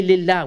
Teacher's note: If there's a kasra, then we say lillah, we make it light.